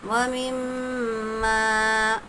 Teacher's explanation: میم پر تشدید ہے، میم مشدد غنے کے ساتھ ادا ہوگا۔